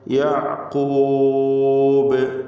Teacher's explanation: യഅഖൂബ് ബായിൽ വഖഫ് ചെയ്യുന്നു. ഖൽഖല കുബ്ര നൽകി ശബ്ദം വളരെ വ്യക്തമായി ചലിപ്പിച്ച ഹറക്കത്ത് പോലെ കേൾപ്പിച്ചുകൊണ്ട് വഖഫ് ചെയ്യുക.